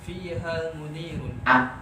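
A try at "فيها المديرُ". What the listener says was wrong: Fihal mudirun. Mudiru ada alif lam pada bertanwin.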